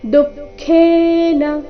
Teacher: ದು ಮೊದಲು ಅಲ್ಪಪ್ರಾಣ ನಂತರ ಖೇ ಮಹಾಪ್ರಾಣ ದೀರ್ಘ